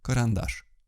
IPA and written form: kərɐnˈdaʂ (карандаш)